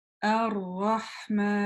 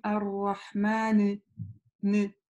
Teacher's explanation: То есть как и мим, так и нун, мы ее завершаем, и придерживая место произношения нун, как бы завершаем через такую небольшую назализацию